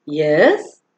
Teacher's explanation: the response that is expected is, Yes, with a rising tone